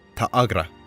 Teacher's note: Instead of a long ah sound, Ta'agra, we end up with what sounds like a slight catch in the throat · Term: dokkai